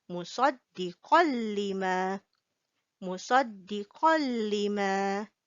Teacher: we do not read the Qan, the N sound behind, but we just joined it with the Lam. We skip the N sound.